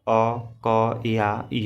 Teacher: जब आप अ क या य बोलते हैं तो वायु केवल मुंह से बाहर निकलती है। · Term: अननुनासिक